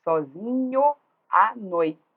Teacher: Havendo encontros de vogais em palavras diferentes, elas se fundem numa sílaba somente, que é o que a gente chama de elisão.